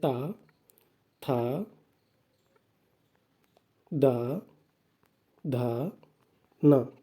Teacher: ता वर्ग के सभी वर्णों का उच्चारण स्थल दंत होता है